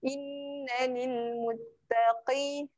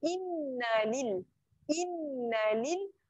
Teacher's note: Nun yang bertanda sabdu yang ni kena dengung. Dengung tapi jangan, okay, dengung dekat sini kadar dengung dia sahaja yang panjang.